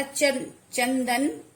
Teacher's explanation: तो चंदन, जब विच्छेद करेंगे तो जो अनुस्वार होगा वो न बनकर, आधा न बनकर लिखा जाएगा और ध्वनि उच्चारण करते समय ध्वनि न की आएगी